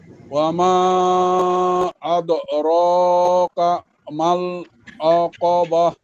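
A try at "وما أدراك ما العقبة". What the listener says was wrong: একটু বেশি ভাঙা ভাঙা হয়ে যায়। ওয়ামা আদরাকা এখানে থামা যাবে, বা ওমা আদরাকা মাল এখানে রর এখানে একটু থামা হয়ে যায়। আদরাকা মাল একসাথে বলে ফেলবেন। আদরাকা মাল আকাবা আলাদা, ঠিক আছে?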